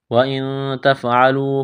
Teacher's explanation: نون ساکن کے بعد تا ہے، حروف اخفا ہے، غنہ کریں گے، آواز ناک میں چھپائیں گے